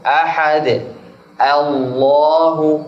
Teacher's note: Kalau diberhentikan tetap mufakhamah Allah.